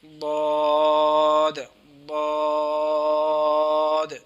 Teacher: تو اس کی کیا اس کا مخرج یہ ہے، زبان کی کروٹ اور اوپر کی داڑھوں کی جڑ سے ادا ہوتا ہے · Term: حرف حافیہ